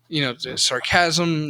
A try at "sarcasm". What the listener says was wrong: Emphasis on the wrong syllables.